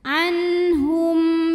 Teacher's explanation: mim sukun ini kita bunyikan dengan jelas. Jadi bunyinya masih m. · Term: idhar syafawi